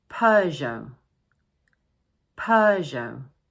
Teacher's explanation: this word is made up of two syllables and the first one is stressed , and don't forget the silent "t" at the end of · don't forget the silent t at the end of the word